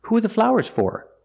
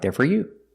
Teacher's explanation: because four is at the end of the sentence it is stressed